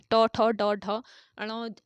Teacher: ट वर्ग के व्यंजनों का उच्चारण होता है मूर्धा से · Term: मूर्धन्य व्यंजन